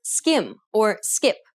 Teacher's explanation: the k in skim doesn't have a burst of air at the end of the sound whereas kit does